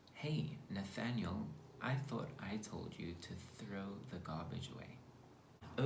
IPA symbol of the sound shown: θ